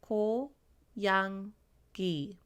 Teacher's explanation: At the bottom of the second syllable, it makes the NG sound.